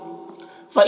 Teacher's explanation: अल्लज़ीना यतरब्बसूना बिकुम, फ़इन के नून में इख्फा होगा, नून के आवाज़ को नाक में छुपा कर पढ़ेंगे।